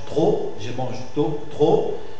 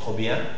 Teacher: Normalement, la prononciation c'est O fermé, trop, mais dans une position atone, c'est-à-dire suivi d'un adjectif ou d'un adverbe, on prononce O ouvert